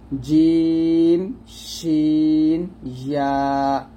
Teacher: জিম শিন ইয়া এই তিনটা মাখরাজ হলো জিহ্বার মধ্যখান তার বরাবর উপরে তালুর সঙ্গে লাগবে, জিম শিন ইয়া, এরকম।